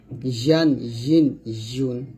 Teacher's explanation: তারপর সর্বশেষ হরফ হচ্ছে ইয়া, ইয়াটা জিহ্বার মধ্যখান তার বরাবর উপরে তালুর সঙ্গে লাগিয়ে আমরা উচ্চারণ করব। ইয়া জবর ইয়া, ইয়া জের ই, ইয়া পেশ ইউ, ইয়া দুই জবর ইয়ান, ইয়া দুই জের ইন, ইয়া দুই পেশ ইউন, ইয়ান ইন ইউন এরকম।